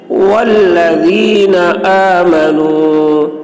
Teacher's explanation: ذال کی آواز باریک ہوگی